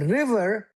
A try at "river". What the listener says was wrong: River. Exactly. Right.